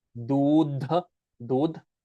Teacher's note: Doodh with a da, like the da between your teeth.